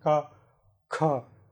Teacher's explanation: is obtained by adding an extra breath of air. It's called aspiration.